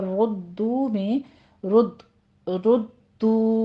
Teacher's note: را مفخم پڑھتے ہوئے دال کی تشدید ادا کیجیے، آگے ہونٹ گول کر لینے ہیں